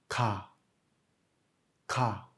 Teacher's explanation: Le son du kiok est quelque part entre le G et le K.